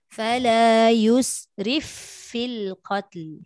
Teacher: Fa dengan fa ni dia ada angin. Jadi bila ada angin ni tidak ada sekatan lah.